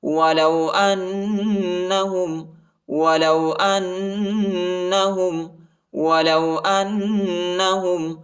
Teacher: حمزہ کو نون کے ساتھ ملائیں گے، نون پر شد آیا ہے اور غنہ کریں گے